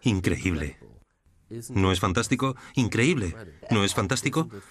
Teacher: tienes una voz muy melódica. Tu voz sube y baja. Me muestra subiendo y bajando el tono, yendo más rápido y más despacio.